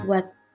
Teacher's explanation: jika berada di akhir kata, fonem T tidak diucapkan lepas. Bibir kita masih tetap rapat, tertutup saat mengucapkan bunyi, misal pada kata buat.